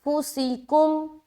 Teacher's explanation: सीन में सीटी आवाज़ जाहिर करे